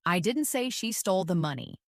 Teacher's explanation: First, emphasize the word I. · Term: emphasis